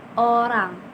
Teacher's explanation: dibentuk dengan membulatkan mulut, lidah itu setengah mendekat ke area belakang